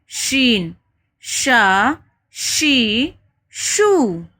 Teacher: پھر ہے شین۔ شین زبان کا درمیانی حصہ تالو کے قریب آتا ہے لیکن ہوا کے ساتھ رگڑ پیدا ہوتی ہے، ایک دم سے تالو میں نہیں چپکتے، تھوڑا گیپ ہوتا ہے، جیسے شین، شا، شی، شو۔